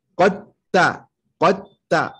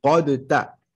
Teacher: Tellement le dal et le ta sont proches. Allez hop. On les fusionne ensemble. On dit qatta, qatta, et non pas qadta.